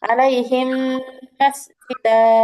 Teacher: যেমন দেখেন, আলাইহিম একটা শব্দ, আর মাসজিদা আর একটা শব্দ। এই দুইটা শব্দ কি মিমের উপর তাসদিদ দিয়ে এখানে যুক্ত করছে, মিলায়া পড়ছে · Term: ঈদগাম